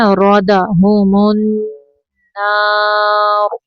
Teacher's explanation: را کے اوپر زبر ہے، را کو موٹا پڑھنا ہے